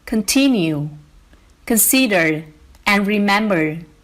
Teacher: many verbs, especially those with prefixes, have a stress on the second syllable